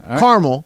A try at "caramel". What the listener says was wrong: There's an A there. You're missing the A. Not silent.